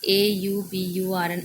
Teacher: Auburn में a first one is stressed and bun is second one schwa